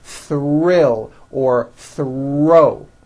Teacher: When producing these blends, I want you to be aware that the R is the strongest sound of the blend and is louder than the TH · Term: THR blends